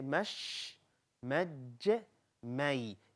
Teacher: the middle of your tongue is touching the palate up there, and that's how you're pronouncing sheen, jim, ya.